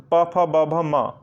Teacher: आपके होंठ दोनों आपस में सट गए और आपके मुख से निकलने वाली वायु को बाधा पहुंची।